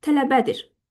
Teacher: vurğu qəbul edir hansı heca sizdə? Üçüncü heca.